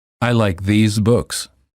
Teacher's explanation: The word these is plural and is pronounced with a long vowel E and a z sound.